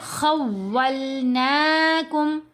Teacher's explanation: مشدد حروف 2 دفعہ پڑھا جاتا ہے، ایک دفعہ جب پچھلے حرف کو مشدد حرف سے ملایا جائے گا تو مشدد حرف ساکن فارم میں پڑھا گیا۔ یہاں دیکھیں واو لکھنے میں ایک ہی آ رہی ہے لیکن پڑھنے میں 2 دفعہ آئے گی، ایک دفعہ ساکن فارم میں، دوسری دفعہ متحرک فارم میں۔